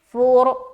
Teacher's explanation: را کو موٹا رکھنا ہے کیونکہ را ساکینہ سے پہلے پیش آ گیا